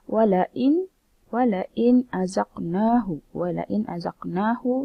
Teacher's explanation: nun mati bertemu hamzah, maka hukumnya izhar halqi, yang mana perlu jelas, terang dan tanpa dengung.